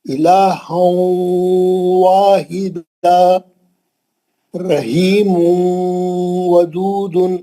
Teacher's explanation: رحیم واو میں گیا، گول منہ کرے واو کے واسطے. ودود یوں وحبت، یوں نون کو لے کے واو میں گئے. · تنوین کے اندر جو نون کی آواز تھی اس کو لے کے واو میں گھسے. الہا، تھوڑا نون باقی ہے، تھوڑا واو ہے. الہا واحدا رحیم ودود، رحیم واو میں گیا، گول منہ کرے واو کے واسطے. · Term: ادغام واو